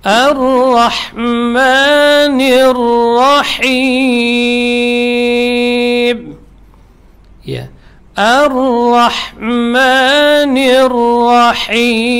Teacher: Ar-Rah, jelas di tengah tenggorokan